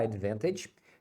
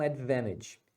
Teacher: Geralmente os americanos falam Advantage eles tiram esse T aqui